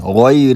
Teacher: یا حرف لین ہے، اس سے پہلے زبر ہے، تو یا کو نرم آواز کے ساتھ جلدی پڑھیں